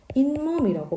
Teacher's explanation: 뒤에 나오는 비음, 조건이 비음이었으니까 뒤에 비음이 나오니까 앞에 있는 디귿이 조음 위치가 같은 니은으로 바뀌는 거예요. 그래서 잇몸이라고 발음이 되는 거예요.